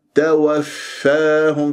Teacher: هكذا، يا ساكنة بعدها ما الطبيعة حركتين توا، شوف توا توفاهم، فالفاء مخرجه ضعيف يحتاج إلى جريان للصوت والنفس، يعني همس ورخاوة حتى أسمع ، خاصة الفاء الساكنة من المشدد، توفاهم مش توفاهم الملائكة، هكذا